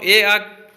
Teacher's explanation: ए, आ का भी उच्चारण स्थान कहाँ हो जाएगा, कंठ